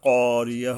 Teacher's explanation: ক হলকের গোড়ার থেকে শক্তভাবে আদায় হবে